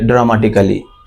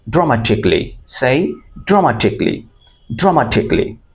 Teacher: CALLY আমরা কেলি বলবো না, আমরা কি বলবো? ক্লি।